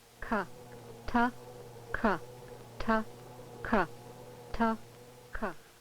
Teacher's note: For example, the stop plosive sounds, T and K, are differentiated primarily by the fact that the tract obstruction on T is between the tongue and alveolar ridge, while for K, it is between the back of the tongue and the undersurface of the hard or soft palate